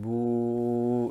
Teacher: the waw sakin, when it has a dhamma before it, its articulation point is al-jawf. So when I say boo, that elongation there is from al-jawf.